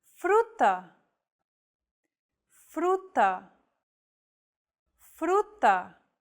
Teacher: this Trill sound is done by lightly tapping the gum Ridge behind your upper teeth with the tip of your tongue it should be a quick striking motion similar to The Sensation